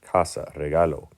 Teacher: word can end with a vowel o and in that case we emphasize or stress the next to last syllable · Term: penultimate syllable